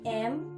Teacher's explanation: bunyi m bunyi nasal bilabial